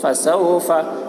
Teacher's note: وَلِيَتَمَتَّعُوا فَسَوْفَ، فا کے اوپر زبر ہے، زبر کو جلدی پڑھیں، تھوڑا بھی نہ کھینچے. واؤ ساکن سے پہلے زبر ہے، واؤ لین ہوا، اس لیے واؤ لین کو نرم آواز کے ساتھ جلد پڑھیں، معروف پڑھیں، مجہول آواز سے بچیں.